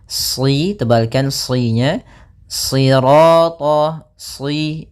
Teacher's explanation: Kemudian pada lafal sirata, ya, kembali lagi di sini shadnya tebal, jangan dibaca dengan huruf sin. Ya, meskipun nanti ada riwayat lain membaca dengan sin, tapi kita membaca dalam riwayat Imam Hafs dengan shad, ya.